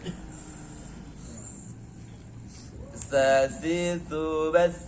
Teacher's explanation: Ujung lidah berada di ujung gigi seri bagian atas. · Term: hamas